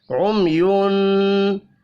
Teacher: मीम साकिन के बाद या है, इजहार शफ़ी होगा, गुन्ना नहीं होगा।